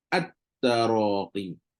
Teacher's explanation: Jadi lam tu tak bunyi. At terus jadi idgham.